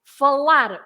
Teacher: the infinitive the name of the verb is just the stress at the end · Because you say falar, you stress lar.